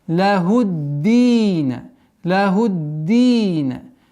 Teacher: С огласовки дамма уходим на удвоенный даль. И два счета долгота.